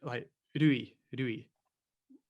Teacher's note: a mixture of L, D, and R all into one sound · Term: the Japanese R